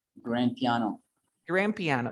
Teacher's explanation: you don't pronounce a d grand piano just one